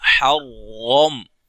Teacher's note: حا زبر را حر، را زبر میم غم، حرم. یہاں را موٹی ہو رہی ہے، کس وجہ سے؟ زبر کی وجہ سے، را کے اوپر زبر ہے